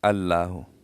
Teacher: अक्सर लोग लफ्ज अल्लाह बारीक पढ़ते हैं अल्लाह और हा पर जोर डालते हैं